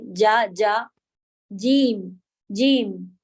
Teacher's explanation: جو کہ زبان کے بیچ کے حصے سے جیم ادا ہوتا ہے. تو تھوڑا سا زبان کا جو یہ والا پارٹ آپ کا رہے گا، اس میں سے یہاں والا پارٹ جو ہے وہ اوپر تالو کی طرف لگانا ہوتا ہے جا کہنے کے لیے جا.